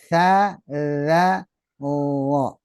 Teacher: ujung lidah ke ujung gigi seri atas